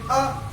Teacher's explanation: तो आ में जीभ आपकी बीच में रह जाएगी, पीछे नहीं जाएगी ना आगे जाएगी। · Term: मध्य स्वर